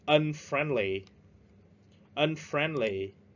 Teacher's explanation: We stress at the second syllable. Chúng ta nhấn ở âm tiết thứ hai.